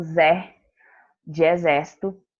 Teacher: está na antepenúltima sílaba na posição número 3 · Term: sílaba tônica